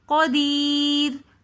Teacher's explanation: را سے پہلا حرف یا ہے جو کہ ساکن ہے تو یا سے پہلے والا حرف ہے دال. اب دال کے نیچے زیر ہے تو اس لیے ہم را کو باریک پڑھیں گے.